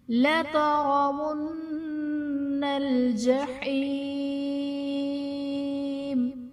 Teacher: لَتَرَوُنَّ میں را پر زبر ہے، را کو پر پڑھا جائے گا، نون مشدد ہے، اس میں غنہ کریں گے